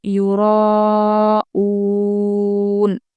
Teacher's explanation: یو جلدی پڑھیں گے، را ہم کھینچیں گے، مد متصل ہے کیونکہ حمزہ اسی کلمے میں پڑھ رہے ہیں۔ او کھینچتے ہوئے ہم نون بھی ملائیں گے کیونکہ آیت پر وقف کرنا یعنی کہ رکنا ہوتا ہے، تو پہلے ہم کھینچیں گے پھر نون کے آواز کو نکالیں گے۔